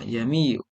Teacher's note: Hamzah yang pertama menunjukkan istifham, sedangkan hamzah yang kedua asal kalimah. Imam Hafiz membaca hamzah khotok yang keduanya dengan bacaan tashil.